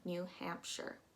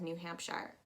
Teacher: pronouncing that ire as if it's just an ir